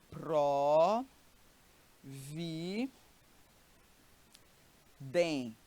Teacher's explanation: ela é a palavra cuja penúltima sílaba é forte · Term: paroxítona